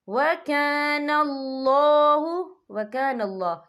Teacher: یہ اللہ کا نام پر پڑھا جائے گا کیونکہ اللہ کے نام سے پہلے زبر ہے